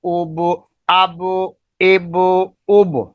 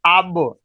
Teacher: جب ہم با کو ساکن کریں گے تو با کو ساکن کرنے میں تھوڑی سی جنبش پیدا ہوتی ہے، حرکت پیدا ہوتی ہے لفظ کی ادائیگی میں ، کیونکہ یہ حروف قلقلہ میں سے ہے، اور حروف قلقلہ